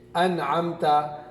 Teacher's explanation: اظہار میم ساکن کے بعد الف نہیں آتا، اور میم ساکن کے بعد با اور میم کے علاوہ 26 حروف میں سے کوئی اور حرف آئے تو میم ساکن کو ظاہر کر کے غنہ کی بغیر جلدی پڑھیں گے، چاہے وہ میم ساکن ایک کلمے میں ہو یا چاہے 2 کلمے میں ہوں۔